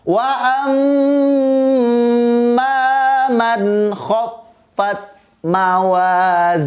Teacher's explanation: Karena nun mati bertemu dengan huruf kho, bunyinya maka harus jelas. Hukumnya adalah izhar. Tidak boleh dibaca berdengung, harus jelas.